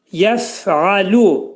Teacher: Demək, bu hərfin məxrəcini deyərkən, demək, bu hərfin məxrəci yuxarı üst dişlə alt dodağın arasında olacaq. Sükunlu fəni deyərkən hava axını kəskin şəkildə ağızdan çıxır.